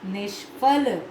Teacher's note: जो विसर्ग है मूर्धन्य स में बदल गया